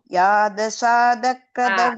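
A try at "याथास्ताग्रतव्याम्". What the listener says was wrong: அதெல்லாமும் த போடக்கூடாது. யாத்தஷாதக்ர இந்த இதெல்லாம் த த எல்லாம் மட்டும் கொஞ்சம் பார்த்து சொல்லுங்க.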